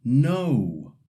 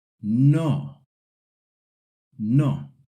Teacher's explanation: The common mistake is saying it like no, sliding the vow. In Spanish, the N sounds just like in English, but the O is a pure O sound.